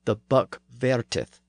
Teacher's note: the F sound was often pronounced as a v sound in the south of England and in the west country